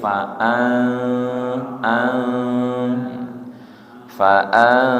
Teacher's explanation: ikhfa nun sukun ketemu za. Cara membacanya sama, ujung lidahnya tidak nempel